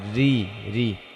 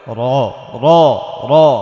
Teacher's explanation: রয়ের নিচে জের হলে রটা পাতলা করে পড়তে হবে, রি রি। রয়ের উপর যদি জবর হয় তাহলে র র র মোটা করে করে পড়তে হবে।